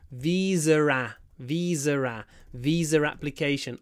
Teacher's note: visa application with a linking R.